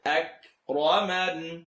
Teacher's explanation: You're going to have the little click on the kaf.